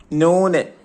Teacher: ആറാമത്തത് നാവിന്റെ തലയും മേലെ മുൻപല്ലുകളെ ഊനും.